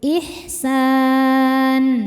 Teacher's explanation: Mad tabi'inya alif didahului harokat fathah, kemudian huruf yang disukunkannya adalah huruf nun. Maka sinnya panjang, boleh 2 atau 4 atau 6 harokat, asal konsisten dalam sekali duduk. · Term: mad arid li sukun